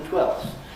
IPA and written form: twelfθs (twelfths)